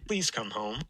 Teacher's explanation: There's not much L there left anymore that's actually voiced. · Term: voiceless L